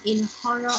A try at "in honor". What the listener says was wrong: Okay, the word you'd say in honor. You don't have to pronounce the H. In that word, you just say honor, okay?